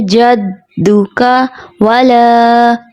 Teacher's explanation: جدک میں جو common mistake ہوتی ہے، تشدید کو واضح نہیں ادا کرتے، جلدی سے ادا ہو جاتا ہے